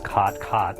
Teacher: if you are in Colorado and you're younger than about 40 you will probably use cot cot the word will be the same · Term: California vowel shift